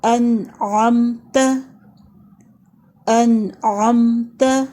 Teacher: تا کے اوپر زبر ہے، اس کو لمبا نہیں کریں گے، صرف ایک حرکت پڑھیں گے